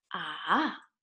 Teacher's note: third tone goes down and up